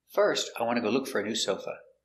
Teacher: intonation goes up before a comma